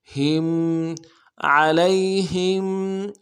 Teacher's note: لام کو یا کے ساتھ ملائیں گے، یا لین بغیر کھینچے پڑیں گے ، عین موٹا ادا کریں گے، علی، ہا کو میم ساکن